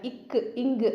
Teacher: இக்கு, இங்கு அப்படின்னா நாவோட முதல் நுனி அன்னத்தின் அடி, நம்ம நாக்கோட ஸ்டார்டிங் உள்ளே இருக்கு இல்லைங்களா, அதுதான் இக்கு இங்கு அப்படின்னு சொல்லும்போது இந்த நாக்கும் அன்னமும் மோதும். நாக்கோட முதலும் அன்னத்தோட அடியும் மேலே இருக்கு இல்லைங்களா, அன்னம், அந்த அன்னத்தோட அடியும் மோதும்.